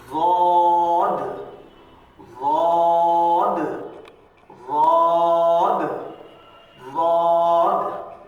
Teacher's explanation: زبان کی کروٹ اوپر کے داڑھوں کے دائیں بائیں طرف جو ہے لگنے سے آپ کو ضاد کی آواز آئے گی